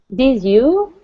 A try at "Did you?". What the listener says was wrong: Did you? Did has got to be lower. Did you?